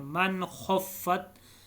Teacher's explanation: نون ساکن کے بعد حروف حلقی میں سے خو آیا ہے تو اس لیے یہاں پہ نون پر غنہ نہیں ہوا بلکہ اظہار ہوا، یعنی ظاہر کر کے نون کو پڑھا گیا ہے۔